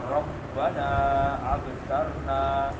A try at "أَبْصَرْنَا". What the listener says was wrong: ابصرنا صاد بھی موٹا، را بھی موٹا.